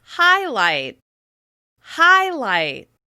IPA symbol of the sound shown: aɪ